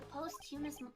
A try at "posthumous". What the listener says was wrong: it's posthumous. You don't pronounce the TH.